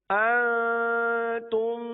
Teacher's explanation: شروع کے نون پر اخفاء کا قاعدہ ہوگا، نون ساکن و تنوین والا اخفاء، اور آگے جو میم ہے اس پر ادغام شفوی ہوگا. دونوں جگہ غنہ کریں گے.